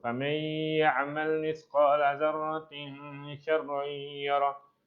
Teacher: Wa may nun mati jumpa ya. Jadi dia idgham ma'al gunnah.